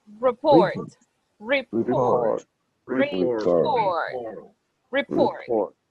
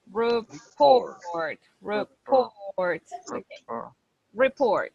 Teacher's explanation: the stress of the word is in the second syllable